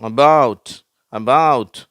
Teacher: இதுல பாத்தீங்கன்னா அபவுட்ல வந்து ரெண்டாவது சிலபல்ல ஸ்ட்ரெஸ் இருக்குது. மற்ற இதுக்கு முன்னாடி உள்ளதுல எல்லாம்ஃர்ஸ்ட் சிலபல்ல ஸ்ட்ரெஸ் இருந்துச்சு ஆரம்பத்திலே இப்ப வந்து